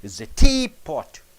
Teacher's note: It's a teapot. So T should be stressed more than pot.